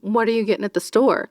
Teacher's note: there's always that extra emphasis right at the end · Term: upspeak